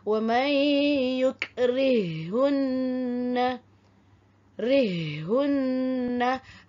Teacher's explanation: Ha mati yang pertama dimasukkan ke dalam ha yang kedua seolah-olah ada huruf yang bertasydid.